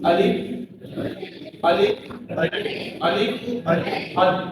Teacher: جو خالی بالکل الف ہوتا ہے وہ بالکل منہ کے خالی حصے سے نرمی کے ساتھ بالکل الف الف الف.